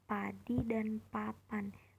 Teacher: Bunyi ini dihasilkan dengan menutup kedua bibir lalu melepaskannya sehingga udara keluar tiba-tiba. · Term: fonem P